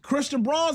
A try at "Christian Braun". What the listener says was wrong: Christian Brown. It looks like Braun, but it's pronounced Brown.